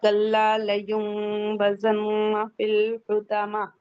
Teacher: کلا لام مشدد ہے، سختی سے پڑھیں گے، الف مدہ ہے.